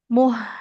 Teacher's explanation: karena mimnya dhammah tidak bertemu waw, nggak boleh kita panjangkan.